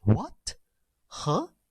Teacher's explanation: it's a rising tone going up like what huh a little bit shorter but it is a rising tone later